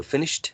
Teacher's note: finish ends in this sh so the ed sound should be voiceless as well so it should be T right so finished that's the only